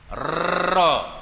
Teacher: Ra bila tasdid, sebab ra ni sifat dia takrir. Tapi dia tak boleh banyak. Bila baca dalam situ tu dia tak boleh banyak.